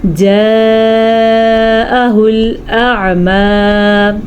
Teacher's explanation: الف جو ہے وہ منہ سے نکلتا ہے اور عین جو ہے وہ حلق سے نکلتا ہے